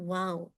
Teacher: दोनों होठों को आगे की तरफ गोल करने से यानी लिप्स आपस में मिलेंगे नहीं